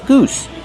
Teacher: Use the long ooh like boot and food. Goose plus the s sound with no voice.